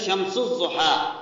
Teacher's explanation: اس کے اندر بھی سین کو ضاد کے ساتھ ملا کر پڑھا ہے، الف لام نہیں پڑھا